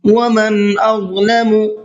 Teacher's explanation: نون کی آواز کو ظاہر کر کے پڑھیں گے